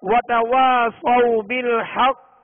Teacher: اب یہ قاف مشدد ہے، قاف پر تشدید ہے، لہذا قاف حروف مستعلیہ میں سے ہے، حروف قلقلہ میں سے ہے، اور حروف مستعلیہ میں سے بھی یہ پر بھی پڑھیں گے اور حروف قلقلہ میں سے مشدد ہے اور اس پر وقف کریں گے تو خوب قلقلہ ظاہر ہوگا